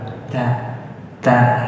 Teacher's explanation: Kalau ta itu harus ada hamsnya. Hams itu apa? Udara keluar.